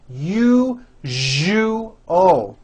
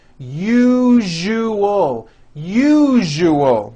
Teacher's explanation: syllable jus the one with the underline needs to be voiced put your hand on your throat and feel for the vibration in the second syllable